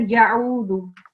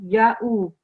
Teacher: So just make sure there's not ayn sound here. It's just hamza.